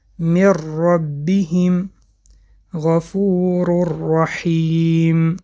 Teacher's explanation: حرف را نیز بی غنه خوانده می شود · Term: ادغام بی غنه